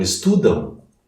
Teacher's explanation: Mas se as duas últimas letras forem AM, como estudam, o correto de pronúncia é um A seguido de um U brando. Estudam, é nasal. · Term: ditongo decrescente nasal